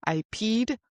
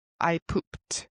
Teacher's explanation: peed ends with the d sound. Pooped with the t sound.